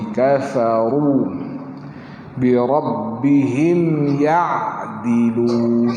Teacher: Bibir masuk bawah gigi.